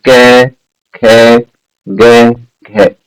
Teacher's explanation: क ख ग घ, ये जो वर्ण है ये सारे कंठ से उच्चरित होंगे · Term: क वर्ग